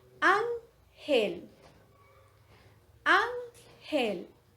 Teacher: la sílaba que tiene el acento es la sílaba an y que es la última, penúltima sílaba.